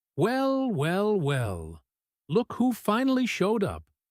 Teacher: But the tone he actually uses, playful, warm, slightly teasing, with a light singing quality rising and falling through the sentence, completely changes the meaning.